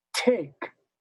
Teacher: Theoretically, perfectly, the T is louder than the K. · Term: stressed and unstressed consonants